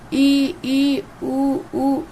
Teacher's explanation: अगर हम इन शब्दों का उच्चारण करें तो दोस्तों हमारा मुंह बिल्कुल कम खुला रहेगा। तो ये संवृत स्वर हो जाएंगे। · संवृत स्वर वो हो जाएगा जिसमें मुंह बिल्कुल कम खुला होता है